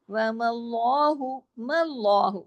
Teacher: آگے دیکھیں، وَمَاللَّهُ، مَاللَّهُ، میم کو موٹا نہیں کرنا، لام پہ جا کے ہیوی کرنا ہے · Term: لام ہیوی